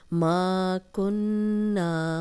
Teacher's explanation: ما 2 حرکات لمبا کریں گے، الف مدہ ہے۔ کنّا نون پہ غنہ کریں گے، اس لیے کہ نون پہ شد ہے، نون پہ شد ہو تو غنہ کیا جاتا ہے۔